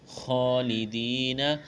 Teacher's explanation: خا کو موٹا کرنا ہے، ایک الف کے برابر کھینچنا ہے